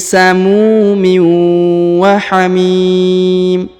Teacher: Huruf mi dipanjangkan 2, 4 atau 6 harokat ya, karena di depannya terdapat ya sukun sebelum huruf pemberhentian yang ini ya, dan huruf yang di ujung ini berhenti di sini maka disukunkan atau dimatikan.